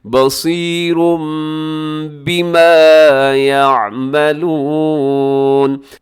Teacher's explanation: بصیر بما، بصیرن کے آخر میں تنوین ہے، تنوین کے بعد با ہے تو تنوین کو میم کے ساتھ بدلنے میں ہم دیر نہیں لگائیں گے